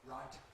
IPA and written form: raɪt (right)